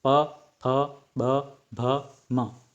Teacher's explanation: ओष्ठ मतलब कि हमारे होंठों से जिनका उच्चारण होता है वे होते हैं।